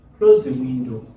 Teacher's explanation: Close the window. Carries the falling intonation.